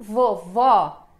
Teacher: a sílaba mais forte é o segundo vó, então vovó.